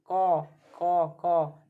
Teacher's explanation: यह तो अंदर वाले तालू में हमें सट रहे हैं